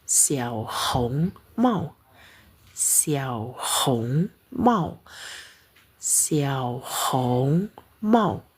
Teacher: karena nada ketiga bertemu nada tiga di sini bacanya nada kedua